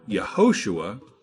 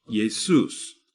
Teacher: alphabet had no Y sound so it used the I sound the Greek alphabet also has no h or equivalent so this sound is dropped · also has no h or equivalent so this sound is dropped the Greek alphabet also has no sh sound so it uses the S sound